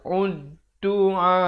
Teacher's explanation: Di sini alif lam syamsiah. Jadi lamnya tidak dibunyikan.